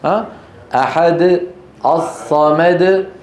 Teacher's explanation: ما في مط القلقله بالعكس هي قصيره لانه حرف شديد وقلنا بان الحروف الشديده زمانها قصير